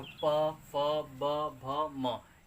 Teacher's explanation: ओष्ठ, यानी दोनों ओठों की सहायता से जो वर्ण बोले जाते हैं। जैसे प, जब आप प बोलेंगे तो ये ओठ दोनों आपके क्या होंगे, टच करेंगे आपस में। तो प, फ, ब, भ, म, ये जब भी बोलेंगे तो आपका ओठ वाले उच्चारण कहलाएंगे।